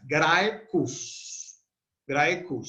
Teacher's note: Grae es larga porque tiene un diptongo. Los diptongos son como vocales largas.